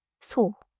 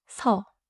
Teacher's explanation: Same consonant, different lips. 소는 입술을 둥글게. 소. 서는 입술에 힘을 빼고. 서. 느낌이 다르죠?